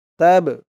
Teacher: এই বাটা কল কলার হরফ ধাক্কা দিয়ে পড়তে হবে